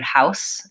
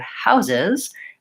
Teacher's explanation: in the word houses my S is turned to Z sounds